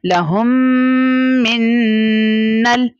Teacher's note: मीम साकिना के बाद दूसरी मीम का आ जाना, इसका मतलब ये होता है यहाँ पर इदगाम शफवी का कायदा हो रहा है, यानी हमने इन दोनों मीम को इनकॉर्पोरेट कर देना है, मिला देना है और वहां पर गुन्ना कर लेना है